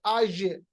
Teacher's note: आज आप देखिए आखिर में जो जीम जहां से आप पे अदा हो रहा है, कैसे अदा हो रहा है कि हमारे पास जो जबान का जो बीच वाला हिस्सा है ये ऊपर के तालु की तरफ उठ रहा है